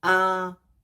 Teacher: the first tone is high and flat